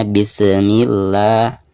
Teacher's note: ketika membaca bismillah, sinnya itu suka ada pantulan